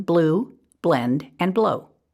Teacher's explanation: We want to avoid saying ul for an L blend, and instead keep the sound of the L clipped. So for the blend BL, we would not want to pronounce it as bull, which adds the schwa in front of the L, but bl, as in blue, blend, and blow. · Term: L blends